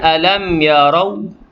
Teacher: Kemudian alam yarau, mim mati bertemu dengan ya, izhar syafawi, jelas mim mati. Yarau, ra tu tebal kerana bagi atas